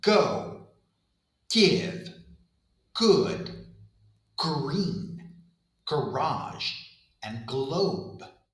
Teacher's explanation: Back of the tongue against the soft pallet. But now my vocal cords are vibrating. · Soft palate sound g, g, g, g in words like go, give, good, green, garage, and globe. G is made exactly the same place as k, back of the tongue against the soft palate. But now my vocal cords are vibrating.